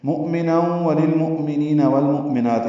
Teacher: اس میں مؤ جو ہے یہ حمزہ ساکن ہے، تینوں میں یہ جھٹکے سے پڑھا جائے گا